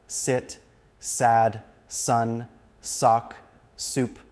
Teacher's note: place the tip of your tongue behind your top front teeth and release a burst of air, making sure not to add any vibration in your vocal cords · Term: S sound